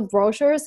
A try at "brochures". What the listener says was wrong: cannot say brochures. We move the stress and we move the stress to the second syllable, brochures. We have to put the stress on the second syllable. Again, brochures. Brochures. I cannot say brochures. We have to put the stress on the second syllable, brochures.